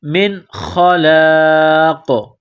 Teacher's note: من خلاق، یہاں پر جب سٹاپ کریں گے، وقف کریں گے تو قاف کو سائلنٹ کریں گے، قاف جب ساکن ہو جائے گی تو یہاں پر قلقلہ کریں گے